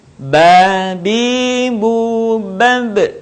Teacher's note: Melafalkan huruf Ba, caranya dengan merapatkan dua bibir kita, tidak jauh berbeda sebagaimana kita mengucapkan huruf B dalam huruf Latin.